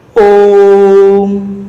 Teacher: तो हम उतना ही समय ओ को बोलने में लेंगे। देखिए, जितने समय में हम ओ को 3 बार बोल सकते हैं उतना ही समय हम इसको बोलने में लेंगे। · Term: प्लुत स्वर